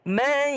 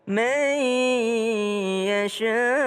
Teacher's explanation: ada nun ketemu dengan ya. Mai. Ya, berdengung.